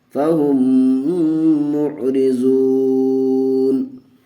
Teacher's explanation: دیکھیے ناظرین جزم اور تشدید اگر ایک ساتھ آ جائے تو تشدید کو پڑھتے ہیں، جزم کو چھوڑ دیتے ہیں. تو ہم یہاں ہا کو میم سے ملائیں گے دوسرے والی میم سے تشدید کے ساتھ. فا زبر فا ہا میم پیش ہم فہم میم عین پیش مع فہم مع را زیر ری فہم معری زاد و پیش زو فہم معرزو نون زبر نہ فہم معرزون.